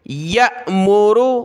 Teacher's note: حمزہ ساکنہ ہے، جھٹکا دیں گے